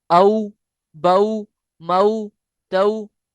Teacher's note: वाओ जब लीन होगा तो उसको औ नरमी से मारूफ पढ़ेंगे, लंबा नहीं करेंगे। इसी तरह या जेर की वजह से मद्दा हो जाएगा, जबर होने पर वो लीन होगा।